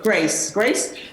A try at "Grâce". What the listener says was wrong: It's pronounced the French way. Grâce.